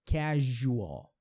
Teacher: não é um som de Z, é um som de J, casual, que é o mesmo som de Júlia, Juliana.